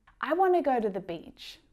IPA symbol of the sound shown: tə